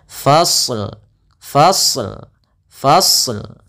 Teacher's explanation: tapi hati-hati jangan memantulkan shadnya · Nah, kemudian dalam lafal ini kita sempurnakan dulu huruf shadnya, yaitu kita fa ketemu dengan shadnya tebal, fasl, fasl, fasl.